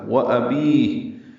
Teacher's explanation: حمزہ اقصی حلق سے بالجہر، بی یا مدہ ہے، ہا ساکن ہو گئی، مد عارض سکون ہو گئی، لمبا کر دیں گے وقفاً، وَأَبِيهِ اور ہا پہ ہمس ہوگا۔